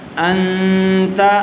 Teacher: حروف اخفا میں سے تا آیا ہوا ہے، تا زبر تا، انت، ان غنّے کے ساتھ اخفا ہوگا